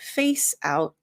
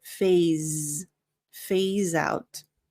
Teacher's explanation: the S sounds like a Z. So it's not face, and the PH sounds like an F.